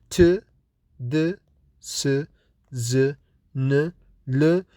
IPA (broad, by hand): t, d, s,z, n, l,